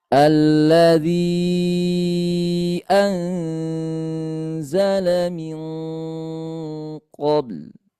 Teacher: Karena hamzah makhrajnya bukan dari hidung. Dari tenggorokan bagian bawah ataupun pangkal tenggorokan.